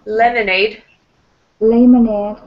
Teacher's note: So first syllable will be the strongest part.